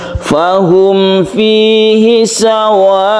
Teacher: Jadi membacanya kita sampai 3 alif untuk mad wajib mutasil yang diwakafkan. · sukun hamzahnya itu harus diperjelas dan bedakan antara sukun hamzah dan sukun ain. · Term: mad wajib muttasil